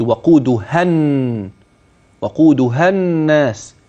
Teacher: همز وصل او الف وصل لا ينطق اثناء وصل الكلام